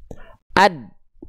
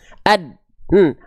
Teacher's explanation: Kita hilangkan dulu qalqalahnya. Sifat syiddahnya itu bukan pada qalqalah untuk huruf dal, tapi pada saat persentuhan makhrajnya.